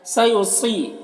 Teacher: صاد حروف مستعلیہ میں سے پر پڑھیں گے۔ یہاں پر یا مدہ ہے 1 الف کے برابر کھینچیں گے۔